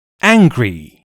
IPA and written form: ˈæŋɡri (angry)